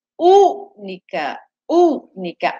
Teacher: A U, antepenúltima sílaba, ela é mais forte, que é o U. Então, é uma palavra proparoxítona.